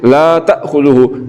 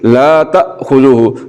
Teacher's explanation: حمزہ کو پڑھتے ہوئے آواز کو پہلے مخرج میں بند کریں گے اور پھر چھوڑیں گے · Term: صفت شدت